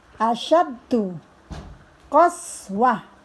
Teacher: Asyaddu qaswah, mati ke huruf ta yang bulat, ini namanya tak marbutoh, berubah menjadi suara ha